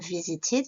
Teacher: Visit, ça devient visited. Là la terminaison ed se prononce id.